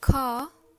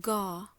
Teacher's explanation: the first line is voiceless while the second one is voiced